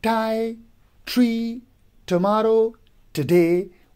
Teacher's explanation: So the first one, that is T, like tie, tree, tomorrow, today, would be a voiceless consonant sounds. By place of articulation, it would be alveolar. By manner of articulation, it would be stop.